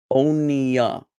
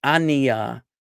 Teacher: This vowel is actually the shortening of the O sound in Hebrew. And so this kamatz, this chataf kamatz, actually makes a sound more like O than or So this word for boat is Oniya.